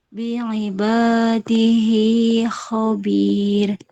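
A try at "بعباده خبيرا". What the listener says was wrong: Nah, ro tetap dibaca ya, fathah bertemu alif. Kalau bukan alif kecil. Kecuali yang ini, yang bi'ibadi. Nah, kalau mau kita wakafin di haknya, maka berarti jangan dibaca panjang. Jadi bi'ibadi, bukan bi'ibadi. Hanya yaknya ya kecil.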